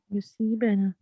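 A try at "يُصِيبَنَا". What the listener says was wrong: युसबना नहीं है, ये है युसीबना। ठीक है, तो इसकी अरबी जब आप अदायगी करें ना तो फिर सारे इसके हरकत को अदा करेंगे।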